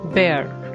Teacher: it will be pronounced as bear with a weak R sound in the end